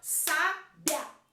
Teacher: Não separo, então ele é um ditongo